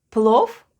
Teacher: In plov, v at the end is pronounced as f. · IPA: /plof/